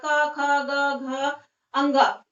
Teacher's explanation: कंठ का मीन्स होता है गला, ठीक है, गला। जो गला होता है इनका उच्चारण गले से होता है। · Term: का वर्ग